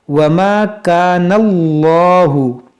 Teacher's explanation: इसमें जलालत से पहले ज़बर है, इसको मोटा करेंगे। वमा कानल्लाहु, और ये तो हुरूफ़े क़लक़ला है, इसमें क़लक़ला करेंगे।